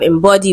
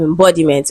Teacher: So the word is gotten from embody. Embody is the root word and it is stressed on the second syllable